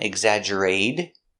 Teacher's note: we change a t to a D sound exaggerated because it's between vowels